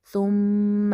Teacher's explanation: ثم میم مشدد کا ہم نے غنہ کرنا ہے